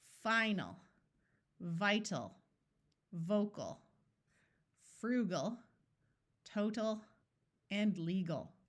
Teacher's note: the AL sound is going to schwa, so it's not going to be a clear AL sound, it's going to be ul